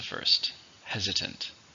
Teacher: How many syllables in hesitant? 3, stress on the first,